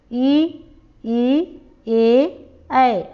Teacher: जो जीव का अगला भाग जिनके उच्चारण में यूज होता है उन्हें अग्रस्वर कहते हैं